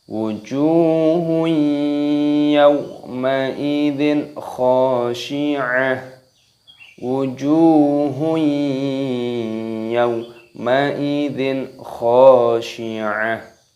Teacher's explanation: Hukumnya dibaca idgham bi ghunnah. Jadi dimasukkan disertai berdengung. Wujuhun yawma idzin, yaw. · Perhatikan wujuhnya dipanjangkan, ada wawu sukunnya.